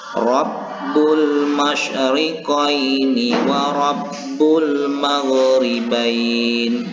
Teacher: hukumnya ra-nya ini dibaca tafkhim atau tebal